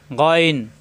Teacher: কন্ঠনাল শেষ অংশ থেকে গন